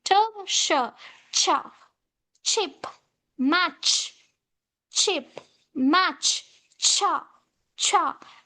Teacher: First, it starts with plosive, and again immediately it follows with a sha sound. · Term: affricate